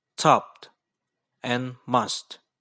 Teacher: the flow of air out of the body is interrupted by touching the tongue to the alveolar ridge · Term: lingua alveolar plosives